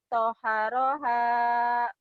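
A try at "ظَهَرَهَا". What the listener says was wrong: Ada titiknya. Zo ya, bukan to. Zaharaha.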